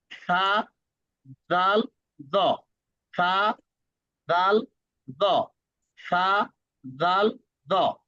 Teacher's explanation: তিনটা উচ্চারণের সিস্টেম হচ্ছে জিব্বা কামড়ে ধরে